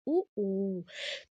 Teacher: जब आप ऊ बोलते हैं तो जो ओठ है वो बाहर की तरफ आ जाता है ना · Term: ओष्ठ